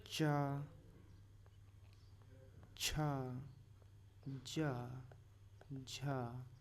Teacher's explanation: इनको हम स्पर्शी संघर्षी व्यंजन कहते हैं